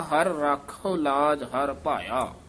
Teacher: ਰਾਖਹੁ ਹਹਾ ਉਚਾਰਨ ਕਰਨਾ ਰਾਖੁ ਨਹੀਂ ਕਹਿ ਦੇਣਾ